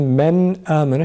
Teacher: Sakin nundan sonra izhar harflerinden hemze geldiğinden dolayı nunu açık bir şekilde okuyoruz.